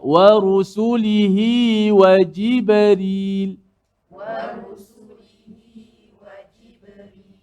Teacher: qalqalah ba tu tidak boleh dilambatkan